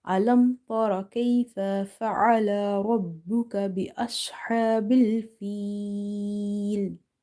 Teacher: in the word feel, Ya is madda, so Ya is stretched.